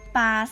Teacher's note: ควบกล้ำแท้จะออกทั้งพยัญชนะตัวหน้าและตัวข้างหลัง